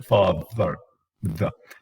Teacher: voiced, interdental, or voiced lingua dental fricative. Sometimes even they call them dental, but you should not do that.